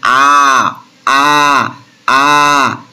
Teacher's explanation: আর অকুঞ্চিত অর্থাৎ মুখটা রাউন্ড, অকুঞ্চিত মানে কি, মুখটা আমাদের ওইরকম, মুখটাতে ওইরকম দেখবি কি বলবো, ভাঁজ ভাঁজ আসবে না, যেমন আ আ আ, দেখ পুরোপুরি ওপেন হয়ে যাচ্ছে, না গোল হচ্ছে, না ঠোঁটটা ভাঁজ ভাঁজ পড়ছে, না কোনো কিছু, সেই জন্য এটাকে বলা হচ্ছে আনরাউন্ড, অর্থাৎ অকুঞ্চিত।